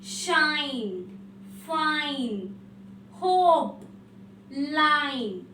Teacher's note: അപ്പൊ ഈ ഐ എന്നുള്ളത് നമ്മൾ ലോങ് ആയിട്ട് വായിക്കണം. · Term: ലോങ് സൗണ്ട്